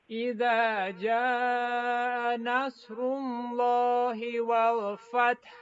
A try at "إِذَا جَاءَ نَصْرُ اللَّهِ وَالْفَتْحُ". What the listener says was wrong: You can make the hamza clear.